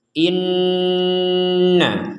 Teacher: In dengung dulu setelah dengung baru na Inna sama dengan ini juga Tum dengung dulu di rongga hidung